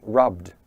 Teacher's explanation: the verb rub ends with a b sound, which is voiced. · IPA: /rʌbd/